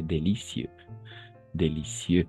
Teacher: Al final siempre viene l'accent prosodique, ¿no? El acento prosódico al final.